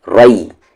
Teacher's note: را کو ہیوی کریں گے یا کو نہیں